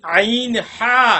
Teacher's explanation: তাহলে গলার মধ্যখান, এটা কিন্তু বুকের থেকে ওইভাবে আসতেছে না, যদিও বাতাস বুক থেকে ভিতর থেকে আসে, কিন্তু পড়ার সময় এটি একটু গলার মধ্যখানের দিকে চাপা পড়বে। অর্থাৎ গলার মধ্যখান থেকে বের করার চেষ্টা করবেন, অতিরিক্ত না। অতিরিক্ত কষ্ট করার কোনো মানে হয় না।